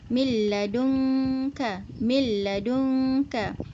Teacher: Nun tu masuk ke dalam lam, dan lam kita hanya baca lam sahaja. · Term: idghaman kamilan